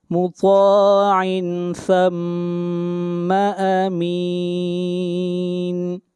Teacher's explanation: طا حروف استعلاء میں سے ہے، طا کو موٹا پڑھا جائے گا